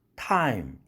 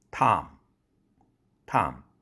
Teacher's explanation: time 할 때 아가 Tom 할 때의 아보다 더 길어졌다. 이유는 긴장음이 되기 때문에 그렇습니다. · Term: 이중모음